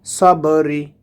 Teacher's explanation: বা এখানে কলকলার হরফ, এখান থেকে পাল্টা আওয়াজ আসবে